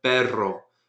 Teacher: you see a double R in a word, like Perro, which means dog, you roll it